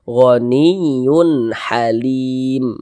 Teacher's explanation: ha karena huruf ha huruf izhar halqi maka hukumnya izhar halqi maka dibaca jelas tak berdengung baca pendek saja